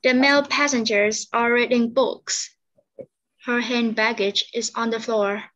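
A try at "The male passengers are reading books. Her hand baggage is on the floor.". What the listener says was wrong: Okay, pronunciation của bạn tốt.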